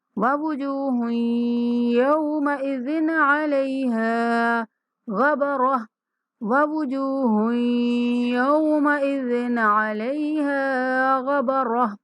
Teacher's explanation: زال پہ دیر نہیں کریں گے کیونکہ زال کے بعد عین حروف ہلکی میں سے ہے تو زال پر اخفا نہیں ہونے دیں گے، اظہار کریں گے